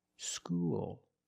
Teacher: When you said school, you used a dark L, because the L is at the end of the word, after a vowel.